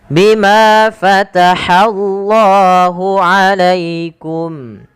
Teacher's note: Bima panjangkan manya dua harakat